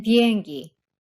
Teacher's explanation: lax B as in 비행기, which is very slightly aspirated